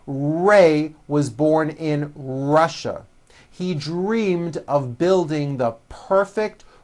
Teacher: Notice how my lips come forward on all my Rs and W's.